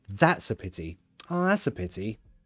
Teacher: see the stress is on that